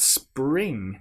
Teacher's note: Now here we've got s, p, r. We've got 3 consonant sounds all together to make spring. And then at the end, ing, that nasal sound again.